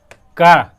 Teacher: गले से निकल रही है इसकी आवाज, कंठ